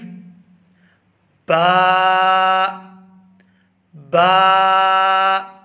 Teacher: ہونٹوں کو آپس میں ملائیں گے اور جب ہم ان کو کھولیں گے تو وہاں سے ادا ہوگی